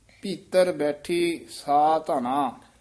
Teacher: ਭੀਤਰ ਤਤਾ ਸ਼ੁੱਧ ਬੋਲਣਾ, ਧੱਦਾ ਭੀਤਰ ਨਹੀਂ ਕਹਿ ਦੇਣਾ